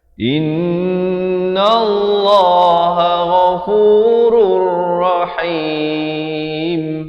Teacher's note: idgham bila gunnah daripada ghafurun jadi ghafurur